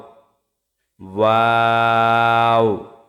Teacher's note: দুই ঠোঁট গোল করে সামান্য খোলা রেখে উচ্চারিত হয় ওয়াও